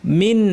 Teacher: এই নুনটা গুনা লম্বা করব না স্বাভাবিক থাকবে মিন কারণ পরে আইন আছে হামজা সাকিন পরে আসলে এই ছয়টা হরফের একটা আমরা নুনটাকে স্পষ্ট করে পড়বো।